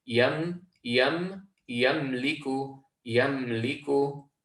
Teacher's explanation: We should completely close off that meme and not add any extra echo or add any qalqalah onto this letter.